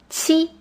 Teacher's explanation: this is a combination of a t and a ch